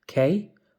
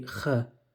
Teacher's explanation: A kaf can either be hard, k, or it can be kh, soft.